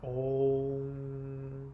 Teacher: So whenever you see like the Sanskrit character for Om, the little dot on top of it is actually an NG sound. So the actual sound is a long O with an NG sound.